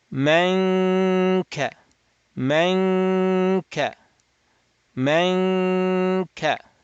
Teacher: So we're going to go from meme to kaf. While at kaf, hold the tongue at calf, nasalize it, open the nasal cavity.